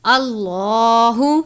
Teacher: لام سے پہلے زبر ہے اس لیے لام کو پر پڑھتے ہیں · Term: اللہ کے لام